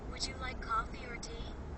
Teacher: In yes no questions the answer is yes or no. The speaker's voice goes up two times.